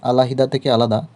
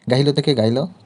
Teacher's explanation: দুই স্বরের মাঝে হকার লোপ হয়